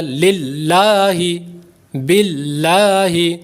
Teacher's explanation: اب یہاں پر لام باریک ہو گیا کیونکہ اس میں جلالت اللہ عز و جل کے لام سے پہلے زیر آ گئی تو اس لیے یہاں پر لام باریک ہو گیا